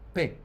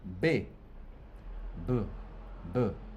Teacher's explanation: Ahora producimos P. No hay ninguna vibración acá. Luego pronuncien B. B, B, B. ¿Se fijan como nuevo empezó a vibrar acá?